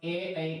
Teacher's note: ए ऐ का उच्चारण स्थान कंठ तालु है